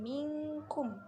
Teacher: nun sukun bertemu dengan kaf, itu ikhfa kiki, dibaca samar